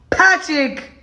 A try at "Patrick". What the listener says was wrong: You just took the R out and made it a CH.